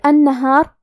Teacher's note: یہاں ہمیں نون کو 2 حرف کے برابر پڑھنا ہے کیونکہ اس پہ تشدید ہے